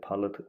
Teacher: Palıt ı qapalı, a isə açıqdır.